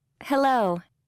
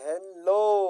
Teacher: دلته دوستانو له اچ ای څخه وروسته دا د لو توری ډېر لوړ او زور ورباندې کړی